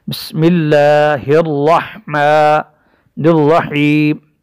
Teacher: را مشددہ بھی ہے اور را مفخم زبر ہونے کی وجہ سے بھی اس را کو ہم موٹا پڑھیں گے۔